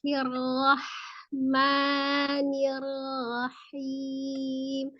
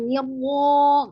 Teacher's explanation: jadi sekali lagi rohnya dibuka ya, bukan dengan menggunakan bibir.